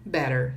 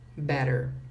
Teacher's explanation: E esses dois T's aqui, do inglês americano, ele vai soar como R.